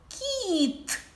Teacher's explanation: останній звук кіт ми його говоримо твердо ставимо карточку з однією рисочкою